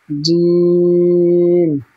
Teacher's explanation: জিমের মাখরাজ হচ্ছে জিভের মাঝখান এবং তার বরাবর উপরের তালুর সাথে লাগিয়ে উচ্চারিত হয় জিম